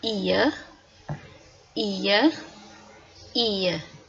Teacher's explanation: it's gliding from e to uh so it's falling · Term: falling diphthong